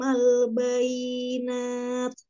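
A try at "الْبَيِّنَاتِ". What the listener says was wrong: Bayi, y-nya ada dua huruf karena dia bertasdid. Al-bayyinati wa ayyad ditekan ya Umi ya, tapi nggak dipanjangkan, hanya ditekan. Bayyinat wa ayyadna. Ba.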